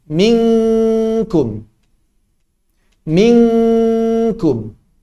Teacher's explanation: Yang paling mirip dengan bahasa Indonesia mungkin nun bertemu dengan kaf. Ini sangat menyerupai suara eng.